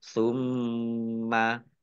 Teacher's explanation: dibaca ghunah atau mendengung ditahan dua harakat